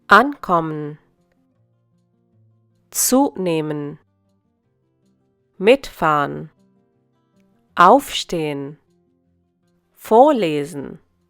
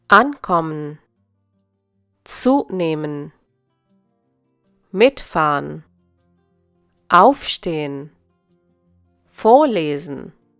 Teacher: when we look at separable verbs, trennbare Verben, the accent is on the prefix and not on the verb stem.